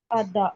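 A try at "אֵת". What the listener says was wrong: एट। एट एट ए नहीं जिस तरह बोलते हैं।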